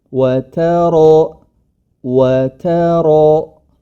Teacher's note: ketika masuk ke ro baru rnya yang tebal